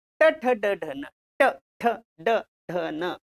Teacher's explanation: हे मूर्धन्य आहे. हे मधल्या भागाला जीभ लागते.